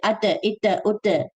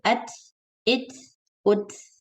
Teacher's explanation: So give only air, don't give voice, don't bounce it